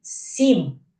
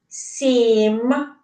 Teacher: звук с і який він в цьому слові м так дітки мякий приголосний звук тому що за ним іде звук і